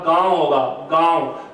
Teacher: ये चंद्र बिंदु लगाने के बाद में ये हमें ये दर्शाता है कि अब आपको इन स्वरों का जो उच्चारण है वो मुख और नाक दोनों से करना है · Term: अनुनासिक स्वर